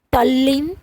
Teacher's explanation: ત વર્ગ એટલે કે દંત વ્યંજનમાં ત થ દ ધ ન એ વ્યંજનો સાથે લ વ્યંજન આવે તો દંત્ય વ્યંજનનો પણ લ થાય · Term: વ્યંજન સંધિ